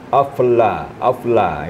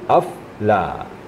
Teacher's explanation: Betul-betul lam itu hanya sekali kedengarannya.